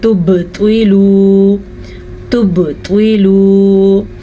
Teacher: बा के ऊपर साकिन है तो झटका होगा, कलकला हो रहा है यहाँ पे।